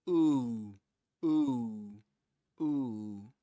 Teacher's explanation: they pronounce one oo sound, and then they pronounce another oo sound, but in which they round their lips even more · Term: long oo sound